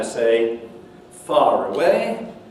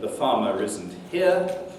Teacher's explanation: But if I say far away, then suddenly the R appears as a link.